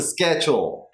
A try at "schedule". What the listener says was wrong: Almost. There is that one sound in the middle that I'm missing, which is the j sound. Schedule.